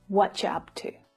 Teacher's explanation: you may hear what you up to, where the ch consonant sound is used.